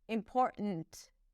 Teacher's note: And then there isn't really a T there. It's a glottal stop.